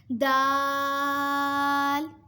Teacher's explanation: دال، زبان کی نوک اور اوپر کے دانتوں کی جڑ سے ادا ہوتے ہیں۔